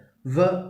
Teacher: Lower lip which is raised in the direction of upper front teeth. അപ്പോൾ active ആർട്ടിക്കുലേറ്റർ lower lip, upper front teeth passive articulator. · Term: ലാബിയോ ഡെന്റൽ